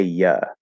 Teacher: it can reduce to a schwa, an actual real schwa, not what I call the high schwa, which is Okay, so instead of you, we can say ya.